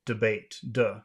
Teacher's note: Now, you can say debate if you want, but most people will say duh. Debate. Duh. They'll make the schwa sound.